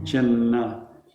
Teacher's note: You do end 1 N and start the next N.